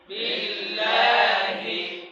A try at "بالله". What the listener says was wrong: ঠোঁট গোল নাই বিল্লাহি